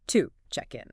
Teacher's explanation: to isn't pronounced with its full strong ooh vowel sound like if you said the word to. Instead, it gets reduced. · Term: schwa sound, the schwa sound